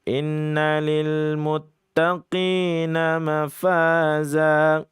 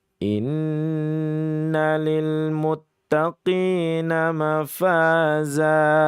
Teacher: Ada di situ ada ghunahnya, ada dengungnya yang memang hendaknya di dengungkan sepanjang dua sampai dengan tiga harakat.